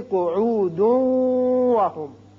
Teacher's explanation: لیکن جب آپ ملانا چاہیں گے تو پھر صرف یہ عین پیشوا عو 2 حرکات کے برابر کھینچنے کے بعد دال کی پیش کو اس واو سے ملائیں گے. کیونکہ یہاں تنوین ہے تو ادغام ہوگا غننے کے ساتھ